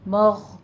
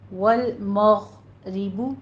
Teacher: غین بھی حروف مستعلیہ میں سے ہے، اس کو بھی پر پڑھا جائے گا